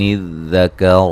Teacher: ذال کو نرم ادا کریں گے، را کو موٹا ادا کریں گے